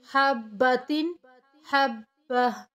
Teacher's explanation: جب ہم رکتے ہیں یا وقف کرتے ہیں تو گول تا کو ہاں میں کنورٹ کر کے ادا کیا جاتا ہے۔ اس کے بعد دوسرا قاعدہ ہے جو ہے وہ ہے تنوین زبر ہے۔